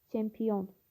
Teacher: Çünki i və o saitlər arasında y samit əlavə olunur · Bəli, vurğu üçüncü hecadadır.